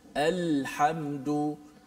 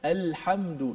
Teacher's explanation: suara keluar tu dia keluar daripada kerongkong kita, kemudian dia melencong ke sebelah tepi kanan dan kiri hujung lidah, keluar ke depan. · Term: lencongan